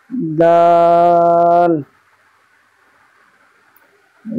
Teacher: দাল, দালের মাখরাজ হচ্ছে জিভের আগা, জিভের আগা এবং সামনের উপরের দুই দাঁতের গোড়া, জিভের আগা এবং সামনের উপরের দুই দাঁতের গোড়ার সাথে লাগিয়ে উচ্চারিত হবে দাল